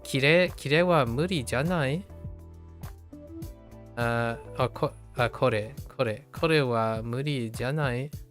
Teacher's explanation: When janai is used as a question, it will usually be obvious due to a rising tone.